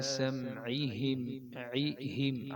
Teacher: عین اور ہا علیحدہ علیحدہ مخرج ہے